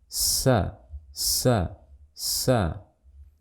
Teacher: Yang pertama, hams. Harus terdengar suara aliran nafas.